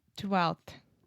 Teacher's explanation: So the F in 12th, we don't pronounce at all.